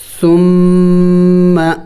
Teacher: میم مشدد اور نون مشدد پر ہمیشہ غنہ کیا جاتا ہے، تو ہم یہاں پہ میم مشدد پر غنہ کریں گے، یعنی ناک میں آواز لے کے جائیں گے